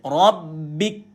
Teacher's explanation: Mati K dulu baru angin keluar. Sebab tu betul KS. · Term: hams